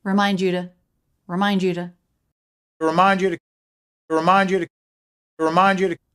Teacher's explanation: just one important syllable there and it's mine